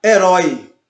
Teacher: Mas no decrescente é o inverso. A primeira vogal ela é dita mais forte e a segunda vogal ela é mais discreta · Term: ditongo decrescente